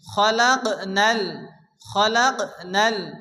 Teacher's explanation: কফ সাকিন, কফ কলকলার অক্ষর হালকা ধাক্কা দিয়ে পড়তে হবে